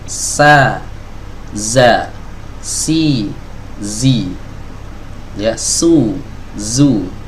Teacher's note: tidak ada proses mengangkat lidah belakang, ya, tidak juga ada proses penyempitan di tenggorokan